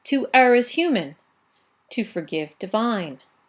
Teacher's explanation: Another 5 syllables and a pause at the end of the line, right? So that strong pause in the middle of the line is a hallmark of the heroic couplet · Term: caesura